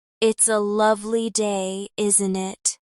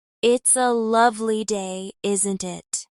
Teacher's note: Hear the rise at the end. Common in British speech.